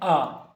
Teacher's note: जैसे स्वर है आ, इसको उच्चारण करने में 2 मात्रा जितना समय लग रही है तो इसे कहेंगे दीर्घ।